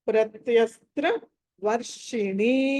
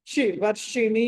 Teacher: ఈ ష కూడా మూర్ధన్ ష అంటే షణ్ముఖ ష అంటారు దీన్ని